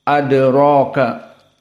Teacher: maka dal sakinah dalam keadaan qalqalah as-sughra. Awas, jangan nanti prakteknya adraka, tapi adraka, ada qalqalah.